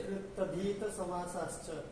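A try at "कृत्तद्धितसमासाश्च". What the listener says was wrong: कृतधित नहीं बोल पाते, तद्धित तद्धित। तद्धित, त फिर द, त अ द ध, तद्धित।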